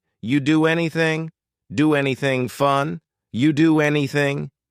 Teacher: We link together doing because we're going to drop the G. It ends with the sound N, the N sound. And then the next word, anything, we sometimes drop the A, and we're going to push those two together because there's two N sounds side by side.